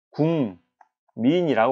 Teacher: 기역이 이응으로 바뀌었네요. 기역은 분명 평파열음이라고 우리는 기억하는데 이응인 비음으로 바뀌었어요. 비음이 아닌 평파열음이 비음으로 바뀌었기 때문에 비음화인 겁니다.